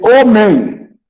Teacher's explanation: Nós temos um ditongo nasal no final de homem